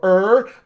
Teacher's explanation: as an american i pull my tongue up and back and brace against my teeth to go er